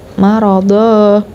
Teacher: akhir tanwin menjadi panjang dua harakat